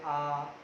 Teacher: जैसे हम आ बोल रहे आ, इसमें हमारे होठ गोल नहीं हो रहे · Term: अवृत्ताकार